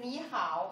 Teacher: ni hao is the third tone. Two third tone together. The first one go up.